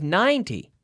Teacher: you can hear the accent right on ninety it falls on the first